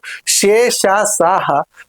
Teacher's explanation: గాలిని బయటికి ఊదుతూ పలికేటువంటి అక్షరాలు ఊష్మాలు